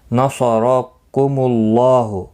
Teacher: نصرکم اللہ، صاد مستعلیہ ہے، پر پڑھیں گے، را زبر کی وجہ سے پر پڑھا جائے گا. اللہ کا لام پیش کی وجہ سے پر پڑھا جائے گا، اس کے اوپر کھڑی زبر بھی ہے، ایک الف کی مقدار کے برابر کھینچ کر پڑھیں گے.